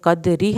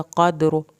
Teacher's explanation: اگر قدری ہم کریں گے تو را پتلا پڑا جائے گا، قدر کریں گے تو را پر پڑا جائے گا۔ یہ دیکھتے ہیں ہمیشہ پچھلے ورڈ کو، اس دال کے اوپر اگر زبر زیر ہوتی، یعنی زبر ہوتی، اور یہ جب یہاں پہ ساکن ہو رہا ہے تو اس نے پر ہونا تھا، یہاں پر زیر ہوتی تب اس نے پتلا ہونا تھا۔